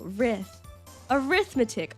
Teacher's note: It sounds the same in both British and American English. So pronounced with stress on the second syllable